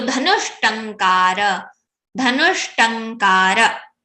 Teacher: If after, before the visarga any swara, after the visarga if there is ta or tha, so the visarga will be converted into murdhanya shakara, murdhanya sha, because ta, tha, da, dha and sha place is same.